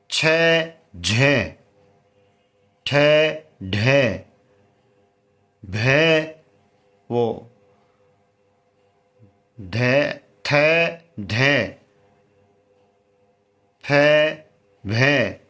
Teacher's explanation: महाप्राण यानी हमें अधिक ऊर्जा यानी अधिक जोर डाल के बोलना पड़ता है